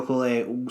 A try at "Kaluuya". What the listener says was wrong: Kaluuya. that's our Northeastern coming into play because we run our syllables together just by natural.